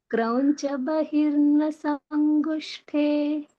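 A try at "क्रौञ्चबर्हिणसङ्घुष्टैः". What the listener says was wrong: It's not Bahir. Read it one more time. Krauncha.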